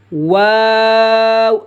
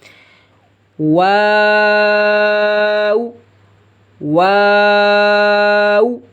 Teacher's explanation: ہونٹوں کی گولائی سے شروع کریں گے اور گولائی پر ختم کریں گے